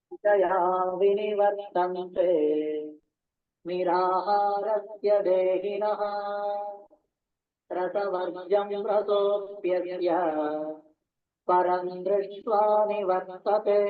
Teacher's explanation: That pause after Raso, like he just sits there